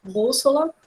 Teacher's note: Bússola, a gente tem o acento no bu, né? Bússola, é uma proparoxítona.